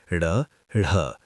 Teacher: उत्क्षिप्त जीभ की नोक झटके से तालू को छूकर वापस आती है, जैसे ड़, ढ़।